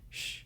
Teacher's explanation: the Y and the double L is pronounced as a sh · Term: sh sound